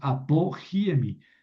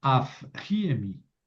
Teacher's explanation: Pero luego como aquí es un espíritu rudo, el verbo esemi, entonces tengo que aspirar esta beta, pi, pi. Eh, la p se aspira porque sigue un espíritu rudo